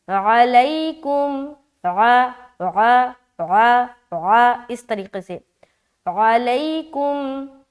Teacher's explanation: یہاں پر اگر کوئی پڑھتا ہے علیکم، کیا پڑھتا ہے علیکم، تو ساری چیزیں تو ٹھیک ہے لیکن عین کی ادائیگی صحیح طریقے سے نہیں ہوا اور عین حمزہ بن گیا